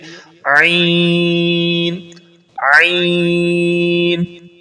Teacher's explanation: عین کا مخرج ہے حلق کے درمیان والے حصے سے ادا ہوتا ہے، the center of the throat۔